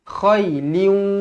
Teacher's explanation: Jadi cara bacanya adalah khailin macam tu. Kena moncongkan mulut sebab kita masuk ke dalam huruf waw. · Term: idgham ma'al gunnah